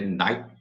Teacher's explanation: Você pode engolir o T.